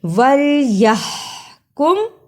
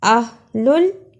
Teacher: وَلْيَحْكُمْ، اہلُل کی ہا کو نرم زبان سے پڑھا اہلُل، یحکم اہلُل، دونوں ہا میں فرق ہے۔ پہلی ہا کو حلق سے رگڑ کے نکالا جبکہ دوسری ہا کو نرم زبان سے ادا کیا۔ اسے ہم وَلْيَحْكُمْ أَهْلُ الْإِنْجِيلِ نہیں پڑھ سکتے، اس لیے کہ حلق سے رگڑ کے جو ہا نہیں نکلی تو اس ہا کا حق ادا نہیں ہوا۔